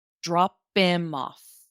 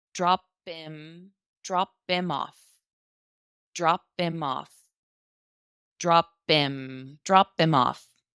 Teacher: we kind of lose that H at the beginning